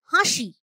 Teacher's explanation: নাসিক্য ব্যঞ্জন বা অনুনাসিক ধ্বনি না থাকলেও উচ্চারণে আপনা আপনি একটা সানুনাসিকতা চলে আসে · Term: শতনাসিকী ভবন